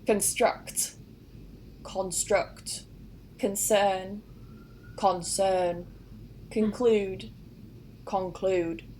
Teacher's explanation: so that schwa at the beginning of the con actually changes to an o sound up north